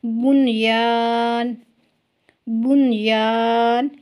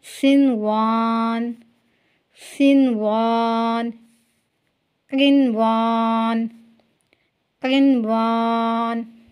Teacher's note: یہاں پر جو ہے ہم نے 4 الفاظ لکھے ہیں کہ 4 الفاظ ایسے ہیں جن میں یا اور واو سے پہلے نون ساکنہ کے باوجود بھی غنہ نہیں ہوگا۔ اس سے پہلے آپ نے سیکھا کہ یا اور واو آ جائے تو وہاں پر ملاتے ہوئے غنہ کریں گے لیکن یہاں پر غنہ نہیں ہوگا ان 4 الفاظ پر۔